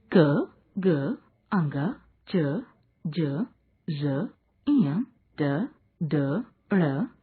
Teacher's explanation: इन वर्णों के उच्चारण में वायु अल्प मात्रा में निकलती है। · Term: अल्प प्राण